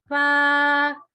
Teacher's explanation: बा, दोनों होंठों को मिलाकर जब अलग करते हैं तो बा अदा होता है। फा, ऊपर के 2 दांत नीचे वाले होंठों की तरी यानी गीले वाले हिस्से पे लगेंगे, ड्राई हिस्से पे नहीं।